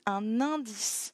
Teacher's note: On fait la liaison ici parce qu'en fait, comme dans enquête, le N se lie avec la voyelle d'à côté